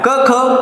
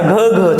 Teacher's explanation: क ख उघड उघड उच्चार कसा होतोय कठोर होतोय आणि याचा घ थोडा मृदू होतोय